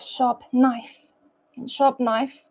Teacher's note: to the n in in knife there is no pause and the P sound slightly changes to blend with the n Sound